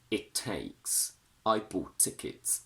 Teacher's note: when we have a vowel and a T sound followed by another word with another T sound at the beginning, and when this happens we double up the T